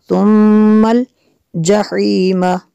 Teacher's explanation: میم شدد ہے یہاں پہ غنہ ہوگا